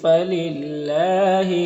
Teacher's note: اللہ کے لام سے پہلے لام کے نیچے زیر ہے تو اللہ کے لام کو باریک پڑھیں گے، کھڑا زبر ایک الف کے برابر کھینچے گئے۔